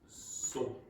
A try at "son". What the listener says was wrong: Now, it's still nasalized there. It's not son. It's not son. It's son.